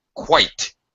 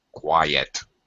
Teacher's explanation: first one quite is one syllable Qui yet is two syllables we separate the I and the e in the word with a Y sound